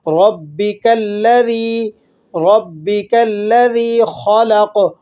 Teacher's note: با پر تشدید ہے، سختی کے ساتھ پڑھا جائے گا